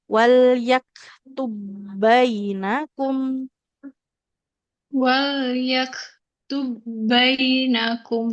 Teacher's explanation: huruf kafnya juga sifat mengalir nafasnya enggak boleh sampai hilang